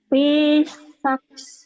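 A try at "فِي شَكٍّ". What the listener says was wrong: Fi syak shin. Shinnya gede. Fi syak. Fi syak.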